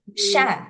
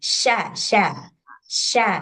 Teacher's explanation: Sya sya dari tengah lidah